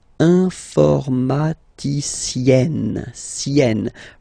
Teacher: Remember E and then double N, or then it could be double L or double consonant here. You open your E, so it's E, informaticienne.